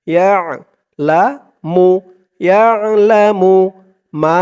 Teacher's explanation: আইনের উচ্চারণটা গলার ভিতর থেকে শক্ত হয়ে আসবে